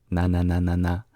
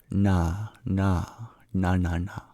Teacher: we curl our tongue back in retroflex and tap the bottom of our tongue onto the hard palate.